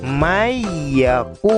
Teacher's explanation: Jadi bunyi nun sukun tersebut hilang, dimasukkan ke dalam huruf ya. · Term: idgham